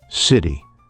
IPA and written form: ˈsɪɾi (city)